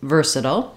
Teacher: it's stressed on the first syllable ver so ver is long and SLE are short with reduced